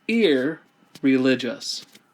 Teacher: an n and in latin into negate the word religious well the n is going to assimilate and become an r